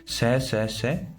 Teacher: इन वर्णों का उच्चारण करते समय मुख में उच्चारण उपयोगी अवयवों के सन्निकट आ जाने के कारण फेफड़ों से निकलने वाली हवा के मार्ग में अवरोध उत्पन्न होता है, अतः हवा अवयवों के मध्य से संघर्ष करती हुई बाहर निकलती है, इसलिए संघर्षी व्यंजन कहलाते हैं। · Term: संघर्षी ऊष्म व्यंजन